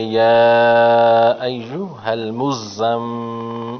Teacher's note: سورۃ المزمل مکیہ۔ یا ایو، یا پہ چھوٹا مد ہے، اس کو 2 الف کی مقدار کھینچیں، پڑھیں گے یا ایھا المزمل، میم مشدد ہے، تھوڑا سا منہ کے اندر بھی رکھتے ہیں۔